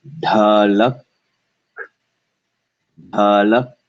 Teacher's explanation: Especially on the K sound. At the very instant you say the K sound, the ka, you should feel no air.